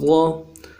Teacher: اس حرف مخرج کو ادا کرتے ہوئے ایک بات اور سمجھ لیجئے کہ زبان کو، جو زبان ہے ہمارے زبان کے سائڈ ہیں، کنارہ زبان سے کہا جاتا ہے، دونوں طرف کے جو زبان سائڈ ہیں، ان دونوں طرف کے زبان کی کناروں کو ہم دونوں طرف کے جو دانت ہیں ان میں لگائیں گے، اوپر کے دانتوں میں۔ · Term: ضاد